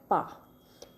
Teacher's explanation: यदि जैसे हम कोई अक्षर बोलते हैं, कोई वर्ण बोलते हैं, जैसे हम बोल रहे हैं पा, तो पा आप बोल कर देखिए, या मा, ना, ये सब वर्ण आप बोल कर देखिए, ये हमारे कहाँ से निकल रहे हैं। जैसे पा है तो दोनों होठ हमारे टच हो रहे हैं